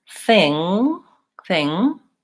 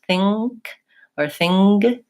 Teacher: there's no release I leave my tongue up there thing in the ng position and I don't let it release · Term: NG sound